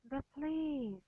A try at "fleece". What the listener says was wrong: So you need to go up there, not flee. Fleece.